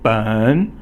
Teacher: then 三 声 is a falling tone and then rising tone.